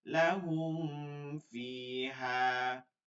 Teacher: এর একটা কারণ আছে। কারণ কি, এই মিমও হচ্ছে দুই ঠোঁটের হরফ, আর ফাও হচ্ছে নিচের ঠোঁটের হরফ। এর জন্য দুইটা ঠোঁট মিলে যায় দেখে এইটা আমাদের গুন্নার একটা লেশ চলে আসে। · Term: ইজহারে খাস